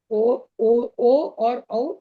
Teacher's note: ओ औ ओ औ इसको कंठोष् कहते हैं। कंठ और ओठ दोनों इसमें लगते हैं।